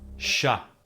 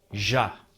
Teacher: Portuguese contains frequent sibilants and specifically has an abundance of palatoalveolar sibilants, sh, which is voiceless, and j, which is voiced.